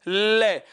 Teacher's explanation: जब तक आपकी जीभ ऊपर रहेगी हवा किनारों से या साइडों से बाहर आएगी, बगल से बाहर आएगी। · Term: पार्श्विक